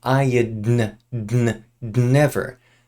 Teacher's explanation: When we say the d here, it kind of blends into the n. We call this a nasal release.